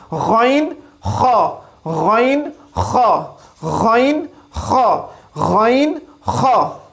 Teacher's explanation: حلق کا وہ حصہ جو کہ ہمارے منہ کی طرف ہے, حلق کا وہ حصہ جو ہمارے منہ کی طرف ہے. غین خا جب آپ پڑھیں گے آپ محسوس کریں گے یہ دونوں حروف ہمارے حلق کے ابتدائی حصے سے ادا ہو رہے ہیں